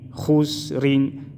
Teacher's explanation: خا سین پیش خس، را دو زیر رین، خسرین، را کو باریک پڑھیں گے، زیر آئے ہے